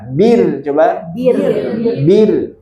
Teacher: Ro sukun sebelumnya fathah dhammah tebal. Kalau ro sukun sebelumnya kasroh tipis ya